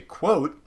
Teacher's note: when you say quote, you're not just saying a T, you are simultaneously saying a glottal stop. You're stopping it here as your tongue goes up here to stop that.